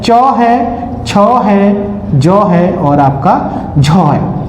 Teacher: ये चार वर्णों को स्पर्श संघर्षी वर्ण जो है वो आप लोगों का कहा जाता है। इनके उच्चारण में हमारी श्वास वायु को स्पर्श के स्पर्श के साथ-साथ घर्षण भी पैदा करना पड़ता है।